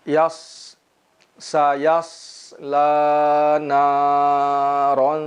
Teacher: huruf sod juga mesti kita baca dengan sempurna, yaitu adanya suara yang mendesis ketika mengucapkannya